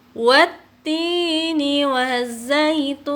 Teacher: wattini itu dibaca 2 harokat, tidak lebih dari 2 harokat, ya, karena disebut dengan mad tabi'i.